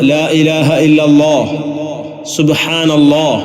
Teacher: നാവിന്റെ തലയുടെ അരവും മേലെ മുൻപല്ലുകളുടെ ഊനും ഇതാണ് ലാമിന്റെ മഹ്റജ് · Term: ലാമിൻ്റെ മഖ്റജ്